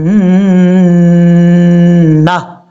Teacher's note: جب یہاں پہ وقف کریں گے تو تا کو ہا سے چینج کر دیں گے اور ہا کو ساکن کر دیں گے ، جنتا نہیں پڑھنا، جب بعض اوقات لوگ پڑھتے ہیں جنت،